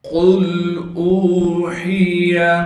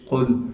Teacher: قاف کو موٹا کر کے پڑھیں گے کیونکہ قاف موٹے حروف میں سے ہے۔ پھر قاف کو ہم لام ساکن سے ملا دیں گے، اس لیے کہ لام ساکن ہے۔